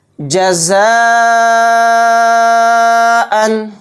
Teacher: جزاءً، تو دیکھیے جزاءً کے اندر اس میں مد متصل کا قاعدہ ہو رہا ہے، کیونکہ یہ جو مد ہے اوپر اسی حروف مدہ میں، یعنی الف مدہ ہے، الف مدہ کے بعد حمزہ اسی کلمے میں ہے، یہی پہچان مد متصل کی ہے۔ اس کو 4 الف کی مقدار ہم کھینچ کر پڑھیں گے